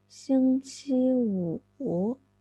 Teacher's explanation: the numeral for 5 is a very low tone. It starts from 2, falls to 1, then rise up again, not right to the top.